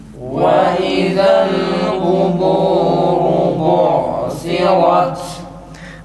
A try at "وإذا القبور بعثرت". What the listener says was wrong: Ta'ya dikkat edelim arkadaşlar. Önce nefes kesilsin sonra okuyalım. Ta'lar düzelmiyor maalesef.